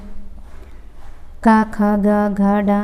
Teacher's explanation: जैसे का वर्ग, का, खा, गा, घा, डा ये कंठ से बोले जाते हैं